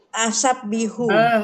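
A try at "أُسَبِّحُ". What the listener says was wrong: di atas tadi domah semua. Kenapa di ana dia jadi fathah? Usabbihu. Usabbihu. Usabbihu. Domah.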